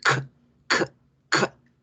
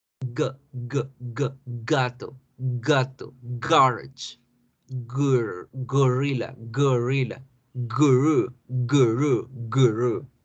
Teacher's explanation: la K no debe generar vibración, la G debe generar la vibración para hacerlas diferentes. K, K, K. Ya no decimos casa normal, deberemos hacer fuerza y explosión. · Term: sonidos velares